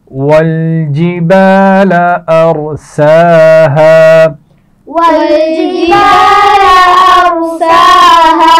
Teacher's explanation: ارساها را کو موٹا پڑھا جائے گا، سین کے اوپر کھڑا زبر ہے اور ہا کے آگے الف ہے تو یہ الف مدہ بھی ہے کیونکہ الف سے پہلے زبر ہے.